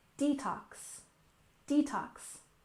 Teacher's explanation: detox we stress the first syllable and we tend to soften that t sound digital digital and